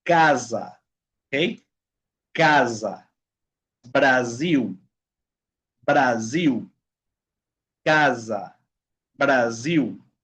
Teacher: Aquí sí viene algo especial porque es diferente en español. Ok, cuando la S, chicos, está en medio de dos vocales, ok, dos vocales, va a ser un sonido como de abeja. Zzz, ok, por ejemplo, casa, ok, casa, Brasil, Brasil, casa, Brasil, tá bom?